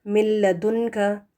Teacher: نون ساکن کے بعد لام اگر آ جائے تو پھر یہاں پر بھی نون پورے کا پورا ڈراپ ہو جائے گا، اپنا وجود کھو دے گا، نہ غنہ ہوگا اس کا، نہ حرف کو پروناؤنس کریں گے.